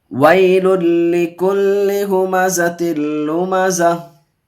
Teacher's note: लाम को लाम से मिलाएंगे। इदगाम यरमनून का कायदा बगैर गुन्ना के पढ़ेंगे। यहाँ याइलिन का कायदा जल्द पढ़ेंगे।